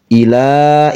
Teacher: ilanya panjang 2 harokat